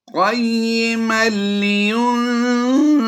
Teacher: यहाँ पर तनवीन के बाद हुरूफ़े यरमलून में से लाम है, इदगाम बिला गुन्ना करते हुए हमने यहाँ पर पढ़ना है मीम लाम दो ज़बर मल